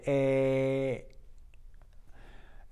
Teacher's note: the closing of that a it's really hard to say a the natural way to end the a as your mouth relaxes it makes that Y sound